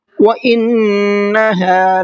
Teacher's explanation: وَإِنَّ کے نون میں غنہ کریں گے